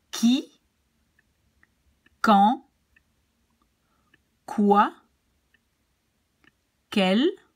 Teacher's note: QU is like a K in French. So don't say the U.